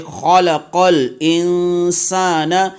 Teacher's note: خا سے ادا کریں گے، یعنی کہ حلق کے اوپر والے حصے سے